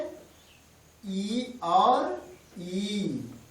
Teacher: ई जो है जीभ के अग्रभाग से बोला जाता है